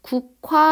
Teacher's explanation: 기역하고 히읗이 합쳐져서 키읔이 남은 현상이 되었거든요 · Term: 축약